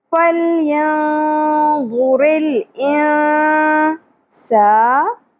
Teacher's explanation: سین میں سیٹی کی آواز بھی ہونی چاہیے